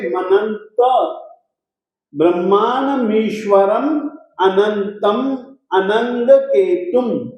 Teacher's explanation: अनुस्वार के रूप में जो म है उसके बाद में अस्वर होने के कारण से मनंत